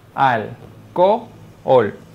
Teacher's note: La palabra alcohol se silabea de la siguiente manera: alcohol. Se trata de un hiato simple porque se encuentran dos vocales abiertas.